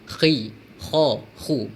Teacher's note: Huruf kha juga berada di kerongkong, tapi di kerongkong yang paling atas sekali. Jadi membacanya perlu ada seolah-olah ada suara serak atau kahak macam tu.